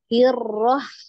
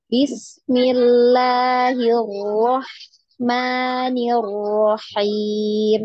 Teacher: ketika dia ditasdid ya, ditasdid itu huruf ro-nya itu seperti sembunyi, jadi tidak terdengar ya